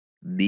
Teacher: Ada qalqalah karena huruf dal yang bersukun dan qalqalahnya kubro karena di akhir kalimat.